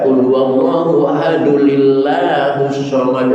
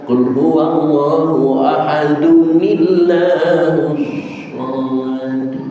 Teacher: bukan ahadulillah bukan pakai lam tapi pakai nun kecil